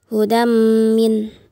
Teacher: Selanjutnya ayat kelima hudam min di mana tanwin an bertemu dengan huruf mim yang dihukumkan sebagai ilgham bighunnaah dibaca dengan ditasdidkan dan didengungkan. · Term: idgham bi gunnah